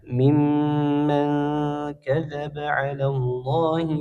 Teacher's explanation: nun sukun bertemu dengan huruf kaf, hukumnya ikhfa, dibaca samar dan dengung